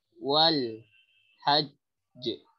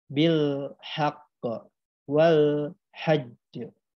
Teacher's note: rumusnya ditahan suaranya 2 harokat, lalu disusul diikuti oleh pantulan atau qalqalah